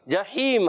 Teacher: ہا کا مخرج حلق کا درمیان والا حصہ